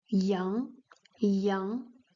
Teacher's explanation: with the second tone going upward